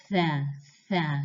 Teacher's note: And tha, you're using the tip of the tongue against your front teeth, tha, tha. You can kind of hear a little bit of breathing coming out of it, a little bit of air coming out with it.